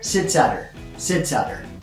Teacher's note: The at has a t sound in it, which changes to a d sound. Adder. All 3 together, sits at her.